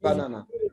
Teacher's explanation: The first and third syllable is unstressed, and we can say it in a schwa sound. But the second sound is na, na, na.